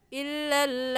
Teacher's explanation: मद्दे मुत्तसिल होने की वजह से मद को 4 अलिफ के बराबर खींचेंगे और एक खड़ी ज़बर होने की वजह से 1 अलिफ के बराबर भी खींचेंगे, तो कुल 5 अलिफ के बराबर खींचेंगे